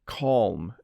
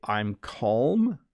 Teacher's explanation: You do say the L and M.